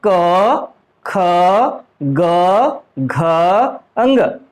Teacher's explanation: क वर्ग का उच्चारण स्थल होता है कंठ से, इसलिए इनको कंठ बोल देते हैं